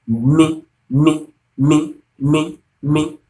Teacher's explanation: Me is a bilabial sound. That is your lips.